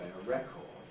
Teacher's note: We keep a strong vowel always in the second syllable and say a record.